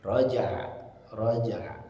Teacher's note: ketika mengucapkan huruf jim dipantulkan kemudian masuk makhraj ain